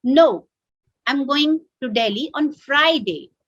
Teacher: so the stress on friday tells that he's not going on wednesday he's going on friday